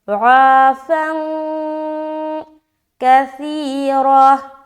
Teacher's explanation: یہاں پر 2 زبر کی تنوین کے بعد کاف ہے، یہاں پھر اخفا کریں گے